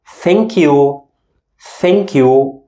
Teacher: We pronounce it tha with my tongue out. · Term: unvoiced /th/ English sound